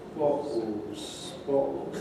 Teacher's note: you notice the syllabic L replaced by O.